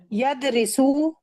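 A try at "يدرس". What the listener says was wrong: زیر کیوں لگا رہی ہیں آپ؟ ذرا سا یدرسو ہوتا ہے نا، یدرسو یدرسو.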